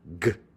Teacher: the sort of back of your tongue up against the roof of your mouth